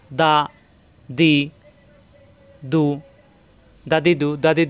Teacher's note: দাল জিহ্বার আগা উপরে দুই দাঁতের গোড়ায় লাগবে